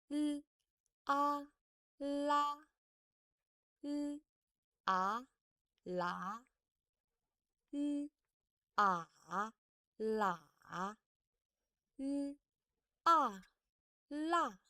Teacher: the airflow is from your mouth, not from your nasal cavity